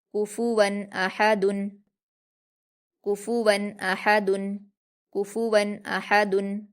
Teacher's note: من عین آنیۃ، من عین آنیۃ، کفوا احد، کاف پر حرکت جلدی پڑھیں گے، فا پر حرکت جلدی پڑھیں گے، واو پر تنوین ہے اور تنوین کے بعد حمزہ ہے جو کہ حروف اظہار میں سے ہے، اس لیے تنوین کی آواز کو ظاہر کر کے بغیر غنہ کے جلدی پڑھیں گے۔ حمزہ پر حرکت جلدی پڑھیں گے، ہا پر حرکت جلدی پڑھیں گے، حلق سے ادا کریں گے، دال پر تنوین ہے، اس کو بھی جلدی پڑھیں گے۔